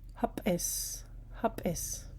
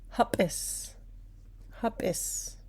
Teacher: It has an ejective P in that sound.